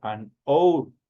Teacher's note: porque prácticamente la H no tiene sonido y obviamente recae el sonido directamente sobre la vocal. Entonces ahí se utiliza el artículo an. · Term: muda